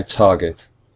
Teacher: it's the first syllable which is just slightly stronger than the second syllable